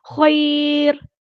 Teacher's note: تو ہم نے رول پڑھا ہے کہ جب بھی را ساکن ہو را تو پھر اس کے پچھلے والے حرف کو دیکھتے ہیں، اگر اس کے پچھلے والے حرف پہ یا ساکن ہے تو وہ را ہمیشہ باریک پڑھی جائے گی